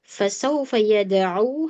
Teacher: hati-hati huruf ain jangan sampai masuk ke rongga hidung. Kemudian dal qalqalah disempurnakan.